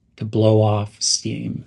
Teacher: make sure to link the words blow and off to blow off steam again those are pronounced almost as one